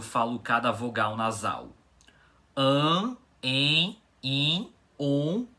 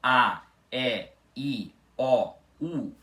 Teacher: Então, quer dizer, quando vocês falam A, E, I, O, U, vocês conseguem perceber que o nariz de vocês pode vibrar menos ou ele pode até não vibrar. Ou seja, quando falamos essas vogais que chamamos de orais, o ar só sai pela boca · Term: vogais nasais